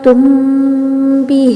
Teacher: میم پڑھ رہا ہے تو ہونٹوں کے بیرون حصے یعنی کہ خشکی والے حصے مل رہے ہیں، پھر با پڑھ رہا ہے تو اندرون یعنی گیلے والے حصے مل رہے ہیں